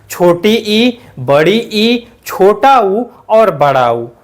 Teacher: रखेंगे हम समृत मतलब लगभग में पूरा मुख बंद ठीक है ऐसे स्वर जिनका उच्चारण करते समय हमारा मुख लगभग में पूरा बंद रहता है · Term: समृत स्वर